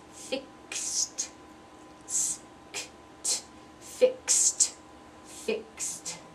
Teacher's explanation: pronounced as two sounds two voiceless sounds so that's a lot there are three voiceless sounds in a row so it makes that very difficult to pronounce so slow down and let your mouth make all the movements